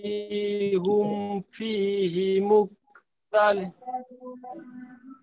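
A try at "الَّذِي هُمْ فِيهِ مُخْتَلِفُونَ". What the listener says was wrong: good তবে হুম বলে হ্যাঁ হুম আমাদেরকে গুণনা করার সুযোগ নাই তো মিম সুকুনের পরে বা ছাড়া অন্য কোন হরফে গুণনা করা যাবে না বা এবং মিম আসলে গুণনা করতে পারবো আল্লাযীহুম ফীহি বলেন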